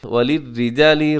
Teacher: را باریک ہے کیونکہ را کے نیچے کسرہ ہے، زیر ہے